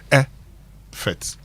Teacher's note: the stress is on the first syllable of the word. When I say the stress is on the first syllable, it means you stress the effort.